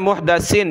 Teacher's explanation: یہ سین نہیں ہے اور صاد بھی نہیں ہے، یہ سا ہے، سا، سیٹی کی آواز نہیں آنی چاہیے